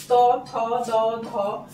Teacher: জিভটা প্রতিবারই ওপরের দাঁতগুলোতে কিন্তু লাগছে এগুলো উচ্চারণের সময় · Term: ত বর্গের